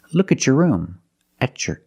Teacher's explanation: When you have a T before a Y in two separate words and you link the pronunciation of the two words, you will hear the ch sound.